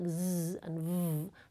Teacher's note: For voice consonants, like [z] and [v], the vocal folds vibrate.